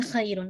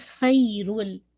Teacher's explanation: آواز جو ہے وہ تنوین کی کمپلیٹلی لام میں مرج ہو گئی. ناٹ ہم پڑھ رہے ہیں خیرن, ہم پڑھ رہے ہیں خیرل, تو sound of the تنوین completely merge into لام, ٹھیک ہے. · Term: کمپلیٹ ادغام وداؤٹ غنہ